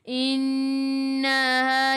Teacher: Nak baca 2 pun boleh, yang masyhurnya 4 atau 5. Innaha nun ada sabdu, tekan ke dalam nun dan dengung 2 harakat wajibul gunnah.